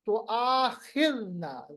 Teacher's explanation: تو آخذنا میں خا کو پر پڑھیں گے حروف مستعلیہ میں، ذال کو نرم پڑھیں گے. اب یہاں پر ذال ہے تو آخذنا، ذال کو نرم پڑھنے کا طریقہ، زبان کی نوک ثنائے علیہ کا کنارہ، اوپر والے دانتوں کا کنارہ.